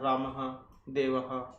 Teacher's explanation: ह की आवाज आती है विसर्गों में